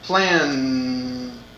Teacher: notice the sound at the end plan it is voiced there is vibration